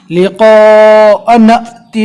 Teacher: نون کے زبر کو حمزہ سے ملا کر جھٹکا دے کر پڑھنا ہے